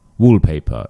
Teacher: Now, if you just as a general rule with English, when one word ends in an R, it's quite common that we won't actually say this R sound